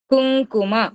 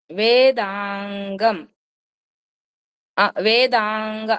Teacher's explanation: కుంకుమ అంటే ఎన్ లాగానే కొంచెం ముక్కుతో పలుకుతాం అన్నమాట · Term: ఇన్య ప్రొనౌన్సియేషన్